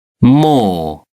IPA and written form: mɔː (more)